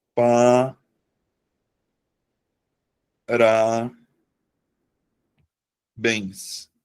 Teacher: a sílaba tônica tá na última sílaba da palavra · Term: oxítona